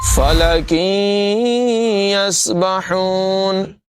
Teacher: تنوین کے بعد یا حروف یرملون میں سے ہے، یہاں پر بھی ادغام ہوگا، غنہ کر کے پڑھیں گے